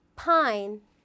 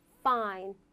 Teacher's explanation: 윗니가 입술이 붙는 사운드 되겠습니다